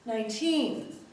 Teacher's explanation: unstressed and then teen is longer